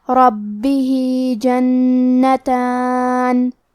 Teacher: کلمت جنتان میں حرف نون پہ تشدید ہے تو ہمیں دو حرف کے برابر نون کو پڑھنا ہے. تا پہ کھڑا زبر ہے تو یہاں مد الف ہے، ہم مد الف کو ظاہر کریں گے.